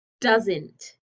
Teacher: The O was gone and we put an apostrophe there. So there's no vowel sound. It just sounds like nt, nt, nt. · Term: contraction